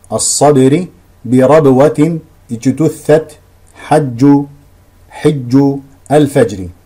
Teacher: وبيان الشده هنا هو حبس الصوت عند النطق بحرفي الباء والجيم · خامسا، ثم بين رحمه الله الاهتمام بالشدة والجهر في الباء والجيم، وضرب أمثلة على ذلك كحب الصبر، بربوة اجتثت، حج الفجر. وبيان الشدة هنا هو حبس الصوت عند النطق بحرفي الباء والجيم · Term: الشده والجهر